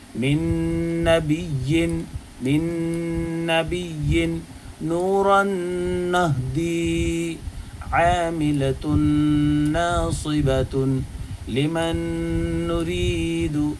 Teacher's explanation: نون ساکن یا تنوین کے بعد اگر نون آ جائے تو ادغام غنہ ہوگا اور اس کو ادغام نون بھی کہتے ہیں، ادغام ناقص بھی کہتے ہیں۔